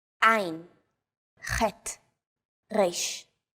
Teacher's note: 3 of these letters are pronounced deep in the throat. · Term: guttural letters